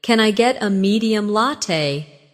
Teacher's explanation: Can I get a medium latte becomes kina get a medium latte.